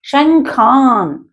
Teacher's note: కాబట్టి ఇది ఒత్తి పలికినట్టుగా పలకాలి. తర్వాత అనుస్వరం ఉంది కాబట్టి దాని తర్వాత అక్షరం ఖా ఉంది, క ఖ గ ఘంగ అని పలుకుతారు. అంగిటితో వస్తుంది ఆ సౌండ్ అనేది. శంఖాన్ అని రావాలి.